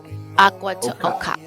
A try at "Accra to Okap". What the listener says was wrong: The key is to emphasize, like in the West, we emphasize like the first part of the word, Accra to Okap. But pronounce these, you gotta emphasize the second half.